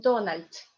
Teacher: Because D in the end of the word is read like T. Donald. So when you say Donald Trump, it's like one word together in Russian, because you have here T and here T.